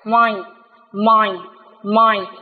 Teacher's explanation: khi đọc chúng ta thấy mũi chúng ta rung